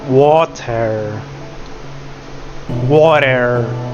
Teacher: It's very rounded. Aw. The mouth is rounded. We have it in water.